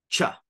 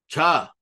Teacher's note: no real buzz but I breathe out it's aspirated